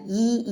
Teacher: ஈ ன்னு சொல்லும்போது அப்படியே பல்லுதான் ஈன்னு தெரியுது அந்த உதடு ரெண்டும் டச் ஆக மாட்டேங்குது